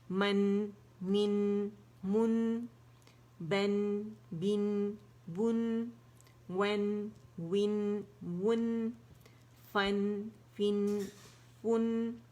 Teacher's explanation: جب میں نون بول رہی ہوں تو اس کی آواز ٹھیک جا کے غنے کی وہ ناک کے اندر سے فیل ہو رہی ہے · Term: غنہ